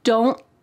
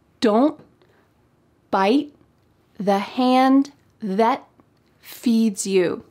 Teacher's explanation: My tongue is at the top of my mouth trying to make that T shape, but there's no puff of air that comes out. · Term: stopped T